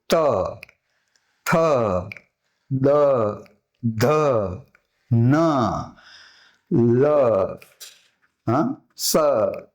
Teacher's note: તો કે ત, જો દાંતને અડી, ત જીભનો ભાગ દાંત અડી, ચોક્કસ સ્થિતિ રચી, અડી અને પછી લીધું એટલે હવાને છોડી